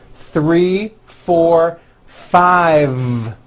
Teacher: I said 5 with a voiced V.